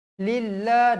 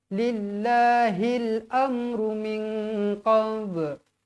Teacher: lillah dibaca nipis sebab huruf lam ni huruf baris bawah. Lillah 2 harakat.